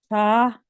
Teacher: زبان کی نوک کو سامنے والے اوپر کے دو دانتوں کے اندرونی کناروں سے نرمی سے لگا کر بغیر سیٹی والی آواز میں پڑھے